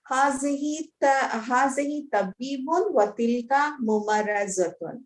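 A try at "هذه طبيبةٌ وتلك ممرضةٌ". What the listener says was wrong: Incorrect. Tha marbuta at the end. Hadihi tabibatun. Mumarrizatun.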